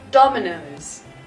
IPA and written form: ˈdɒmɪnəʊz (dominoes)